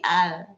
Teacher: Kalau dia nempel ke gusi al. Maka suara itu berbelok lewat sisi. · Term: inhiraf